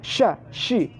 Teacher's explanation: Shin adalah mulut jeber ke depan.